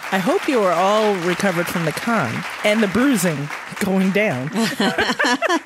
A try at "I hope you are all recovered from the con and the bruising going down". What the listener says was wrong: you put emphasis on the wrong spot.